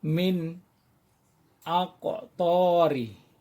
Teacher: a-nya harus jelas, jadi tidak boleh didengunkan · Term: izhar